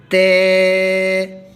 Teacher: زبان کی نوک جب اوپر والے سامنے کے 2 دانتوں کی جڑ میں لگے تو تا پڑھا جائے گا بریک آواز کے ساتھ، تے۔